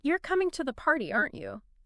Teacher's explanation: a rising intonation at the end signals a genuine question